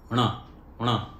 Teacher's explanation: ण में क्या है कि जीभ को थोड़ा सा पीछे की तरफ बेंड करना है, और जहां पर अभी हमने न के लिए टच किया था जीभ को, उससे थोड़ा और पीछे की तरफ चले जाएं, वहां से जीभ को बेंड करते हुए आगे की तरफ उसे फेंकना है।